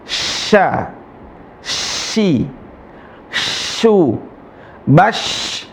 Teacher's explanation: tengah lisan ketemu langit-langit